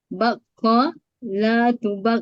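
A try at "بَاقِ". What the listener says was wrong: Baki bukan bako. Amar baki.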